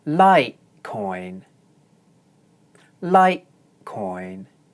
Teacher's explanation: for the stressed first syllable, I use one stable high note